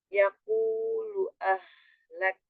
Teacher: ha besar disukunkan, berarti dari tenggorokan paling bawah